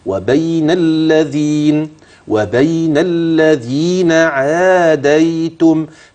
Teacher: الذال ممدودة بالياء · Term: حرف مد طبيعي